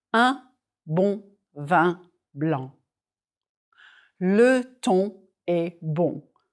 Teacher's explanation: These letter combinations all have the nasalized vowel sound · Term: nasal vowels